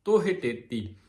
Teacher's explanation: ਤੋ ਤੇਤੀ ਨਹੀਂ ਕਹਿਣਾ ਇਹਨੂੰ ਕਈ ਵਾਰ ਕਈ ਹਹ ਨਹੀਂ ਬੋਲਦੇ